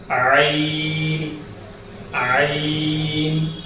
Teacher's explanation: عین کی آواز میں ہمارا بیچ کے حلق سے ہی آواز کو نکالنا ہے، یا اوپر کے حلق سے نکال دیں گے تو غین ہو جائے گا، اگر ہمیں نیچے کے حلق سے نکال دیں گے تو وہ حمزہ میں بدل جائے گا۔